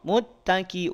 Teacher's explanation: Maka nunnya didengungkan karena nun sukun ya